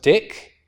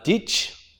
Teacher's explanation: this word is not pronounced dick, it is pronounced ditch, with a ch sound at the end.